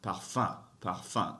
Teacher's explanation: You hear, you don't really hear the M being pronounced. It makes a nasal sound.